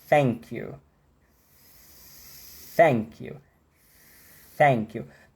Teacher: É mais comum você ouvir voiceless, né, esse TH soprado, tá, do que o TH travado, certo?